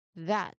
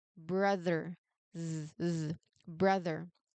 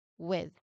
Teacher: you need to keep your tongue in the inter dental position while turning on your voice to create that humming or buzzing effect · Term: voiced th sound